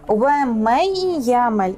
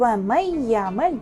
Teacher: nun arifi tamamen yok ola ve ye arifi bizde şeddelini, yani biz ye arifini 2 kere okuymiz. Ve ye arifi bizde gunneli idgam kısmına kiriyor ve böylelikle bunda biz de azıcık ihfa yapmamız.